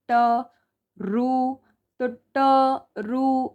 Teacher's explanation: जो रु है ये हमारा मुर्धा से प्रोनाउंस होता है।